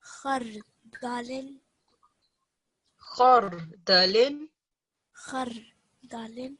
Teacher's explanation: So you can clearly feel that the ra is thick.